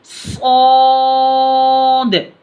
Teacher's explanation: सौद जो है ना मोटा हुर्फ मुस्तालिया कहा जाता है इसको, सौद को मोटा पढ़ना, और ये से हरफी है, आखिर में दाल की आवाज़ आना, सौद ऐसे करके।